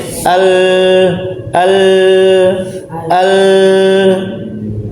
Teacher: Sisi lidah bagian ujung dia membentur langit-langit atas darinya keluar lam